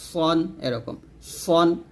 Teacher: জিহ্বাটা নিচের দাঁতে লাগাতে হবে তবে এখানে সদ মোটা করতে হবে সিন পাতলা হবে